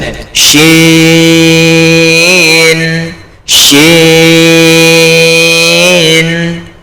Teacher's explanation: এই শিন হচ্ছে মোটা হবে, মোটা করে জিভের মাঝখান উপরে তালুতে ঠেকিয়ে